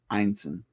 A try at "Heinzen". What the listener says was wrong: No, there's a second H in it. The second H in Heinzen.